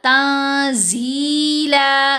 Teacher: زی لمبا کیا، لیکن بہت زیادہ لمبا نہیں کرنا، صرف 2 حرکات کی مقدار، یعنی 1 الف جتنا لمبا ہوگا